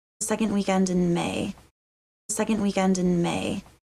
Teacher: I think of the N just linking directly into the W. · The D in second is sometimes dropped, especially when the next word begins with a consonant. I don't really hear much of a D.